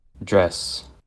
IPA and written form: dɹɛs (DRESS)